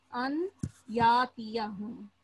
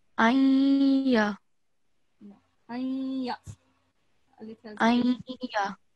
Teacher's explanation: it will merge and it will give a nasal sound. And we give it 2 seconds. Ayya. Okay.